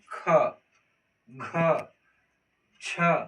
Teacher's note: जिन वर्णों के उच्चारण में हकार की ध्वनि होती है, इसको हम बोलेंगे तो ह जैसा वर्ड आएगा। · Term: महाप्राण